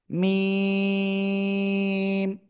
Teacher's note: দুই ঠোঁটের শুকনো জায়গা থেকে চার আলিফ টেনে উচ্চারণ করতে হয়।